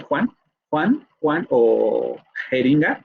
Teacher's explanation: Luego vamos a tener esta velar, que es la J, vamos a decirlo así, de Juan o jeringa